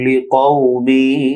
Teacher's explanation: লিকাউ বড় কাফ মোটা হবে, কাউ না হয়ে কউ হবে, দ্রুত উচ্চারণ